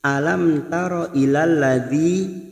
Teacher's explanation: Alam taro ilal ladzi, ada mim sukun bertemu tak, namanya bacaan idhar safawi. Mim sukun dibaca jelas tanpa mendengung.